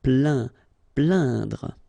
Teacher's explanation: you will get the sound un. So really, this nasal sound in your nose.